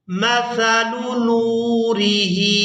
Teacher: नून को वाव मद्दा की वजह से हमने खींच कर अदा करना है और इसके बाद हा को खड़ी जेर की वजह से खींच कर अदा करेंगे